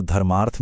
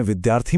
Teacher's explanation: दो छोटे स्वर मिलकर एक लंबा स्वर बना रहे हैं। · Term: दीर्घ संधि